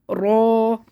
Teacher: رو کو موٹا پڑھنا ہے، تقریر ہوگی تھوڑی سی کپ کپی ہوگی زبان میں